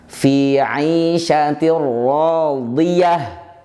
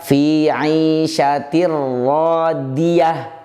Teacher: mengucapkan huruf dod menjadi huruf dal